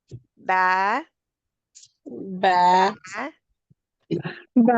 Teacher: ba come from meeting our both lips. Ba, wet part of our lips.